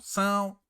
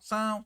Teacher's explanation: é um ditongo nasal, são. Quando você tampa o nariz, ó, são, sai pelo nariz.